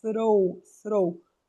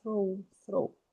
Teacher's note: Esse R é na ponta da língua